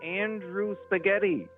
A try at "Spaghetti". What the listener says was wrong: You said spaghetti without a P a second ago, though. So there is, in fact, a P in your last name.